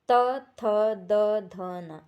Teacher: जो हमारी जीभ है वो दांत को स्पर्श करती हुई जो है बोल रही है · इसमें जीभ ऊपरी दांत पंक्ति को स्पर्श करता है। जैसे पूरा त वर्ग।